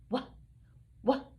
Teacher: wh has a little bit of um a breath of air that comes out